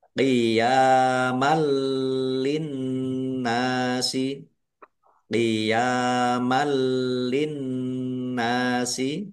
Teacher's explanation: Qiyamal linnasi, qiyamal linnasi, ya fathah berdiri mat tobi'i panjang dua harokat. Fathah tanwin bertemu dengan huruf lam, bacaan idgham bila gunnah, masuk dengan tidak mendengung. Langsung masuk ke huruf lam, ditandai lamnya ada tasdidnya, tetapi tidak mendengung.